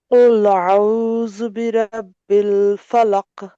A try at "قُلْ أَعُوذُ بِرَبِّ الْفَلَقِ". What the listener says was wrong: ফলাক, কলকলা করতে হবে।